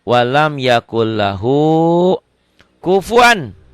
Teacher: Walam yakul lahu, walamnya sama kan, enggak dirubah kan? Walam yakun jadi yakul karena diidghamkan.